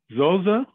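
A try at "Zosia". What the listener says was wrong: Zosha. It's Zosha. Yeah, that's why it makes a sh sound.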